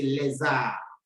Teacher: Since R begins with a vowel, you change the pronunciation of the S to be Z, Z, and you join the two words, le and arbre, to say les arbres.